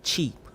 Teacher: the tongue comes up to make contact with the back part of the of the alveolar ridge to form a stop closure stop closure stop closure okay this contact is then slackened slacken